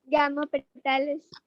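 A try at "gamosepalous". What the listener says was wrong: Gamo, calyx है, sepals बोला तो पेटालस कैसे हुआ? गैमो सेपैलस. सेपैलस पेटालस.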